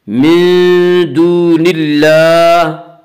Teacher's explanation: نون کے نیچے زیر ہے اس لیے اللہ کے لام کو باریک پڑھا جائے گا۔ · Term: لام باریک